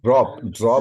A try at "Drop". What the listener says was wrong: Look at the end of D-R-O-P. Put a p sound at the end, okay? It ends in the O-P, just like that.